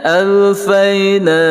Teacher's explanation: Kalau ya ini adalah ya lin saja-saja ataupun ya harfulin, makanya tidak panjang, bacanya alfayna. Jadi jangan terlalu panjang pada na, 2 harakah cukuplah. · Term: mad asli